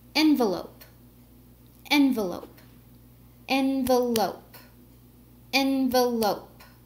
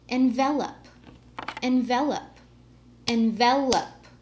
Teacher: for envelope the first syllable is stressed for envelop the second syllable is stressed